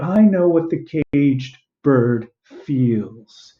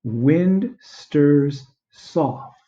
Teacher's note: You have these 3 strong syllables right next to each other.